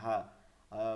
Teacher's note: হা বলতে হবে, হা। বাংলা যে হা আছে সেটা থেকে উচ্চারণ করতে হবে, কোনোভাবে গলার মধ্যে নেওয়া যাবে না।